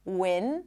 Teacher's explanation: Win, the tip of the tongue blocks the air. Air comes out through the nose. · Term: clear N sound